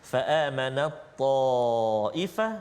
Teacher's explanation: Idgham maknanya kita masukkan bunyi ta ke dalam huruf ta